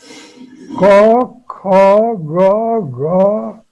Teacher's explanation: कवर्ग जो ग्रुप है उसको बोलने के लिए जो ऑर्गन ऑफ स्पीच को यूज करते हैं वो एक ही जगह से है, तालू के पिछले भाग से